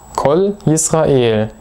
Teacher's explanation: die beiden wörter bilden sozusagen eine klangliche einheit